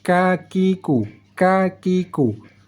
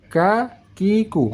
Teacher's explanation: Kalau huruf kaf, cara bacanya kita naikkan pangkal lidah tetapi bersentuhan dengan langit-langit depan. Sehingga saat kita baca kakiku, kakiku.